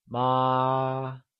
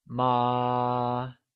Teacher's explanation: mother, which translates to ma, is said with a constant high-level tone, also known as the first tone